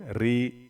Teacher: زیر ہوتا ہے تو ری باریک پڑھتے ہیں